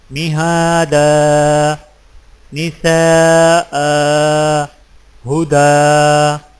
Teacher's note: ایک الف لمبا کر کے وقف کریں جب آخری حرف پر 2 زبر کی تنوین ہو